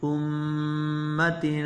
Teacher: غنہ کی ہے جس طرح میں پڑھیا ہے امتن، جڑا لمبا کیتا ہے نک وچ آواز لے کے گیا، یہ غنہ ہے